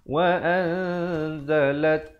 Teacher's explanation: disembunyikan bunyi nun matinya di belakang zai dengan kadar panjang 2 harakat. Asalnya wa'an, tapi bila datang zai, wa'anzalat, lam baris atas terus naik di atas ta. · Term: ikhfa